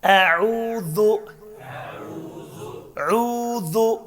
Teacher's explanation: عین چھُ وسطِ حلقہٕ پٮ۪ٹھ